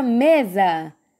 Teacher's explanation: quando eu falei mesa, rápido, a sílaba que chamou mais atenção foi me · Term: sílaba tônica